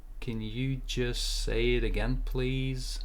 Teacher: the intonation goes up and then it goes down